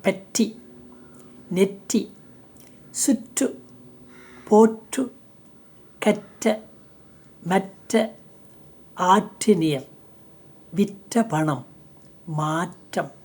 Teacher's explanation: வைஸ்லெஸ் alveoli ப்ளோசிவ் என்று சொல்லுவோம் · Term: வெடிப்பொலி